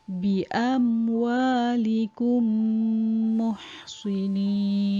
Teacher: idgham mithlain juga didengungkan sebanyak 2 harakat, mulut rapat sahaja